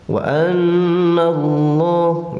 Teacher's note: Lohnya tafhim karena lafdul jalalah sesudah patah, bacaannya tafhim atau tebal. Oke, bacanya ke o gitu ya.